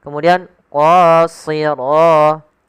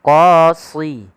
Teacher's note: Kemudian pada lafal qa di sini ada mad tabi'i yaitu qa. Tebalkan huruf qa-nya qa karena dia huruf isti'la yaitu pangkal lidah kita terangkat. Kemudian qasira tebalkan juga karena dia huruf isti'la dan itbaq.